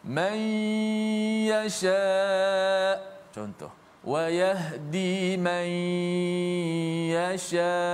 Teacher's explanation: Sebab tu nama dia idgham. Nun tu dimasukkan ke dalam huruf ya. Dan kita baca dengan ma'al gunnah.